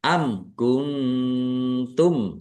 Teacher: mim sukun bertemu dengan huruf kaf bacaan izhar syafawi dibaca jelas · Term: ikhfa